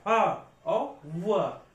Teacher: दंतोष्ठ मतलब ओंठ का भी प्रयोग होगा और दांत का भी प्रयोग होगा। देखो, फ, ओंठ का फ और दांतों पे भी जोर आ रहा, फ और व। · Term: दंतोष्ठ व्यंजन